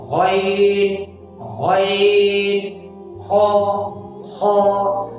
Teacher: अदनाए हलक यानी गले का ऊपर वाला हिस्सा जो मुंह की जानिब है · गैन और खा दोनों मोटे हुरूफ हैं, हमेशा मोटी पढ़ी जाने वाले हुरूफ हैं, उनको हमेशा मोटा पढ़ना है, किसी भी सूरत में इनको बारीक नहीं पढ़ना, हमेशा मोटा पढ़ना है।